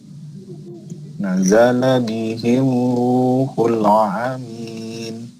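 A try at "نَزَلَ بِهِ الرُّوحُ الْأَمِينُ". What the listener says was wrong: Itu pakai hamzah. Ruhul Amin. Hanya pakai hamzah. Ruhul Amin. Hanya pendek. Nazala bihi ruhul amin.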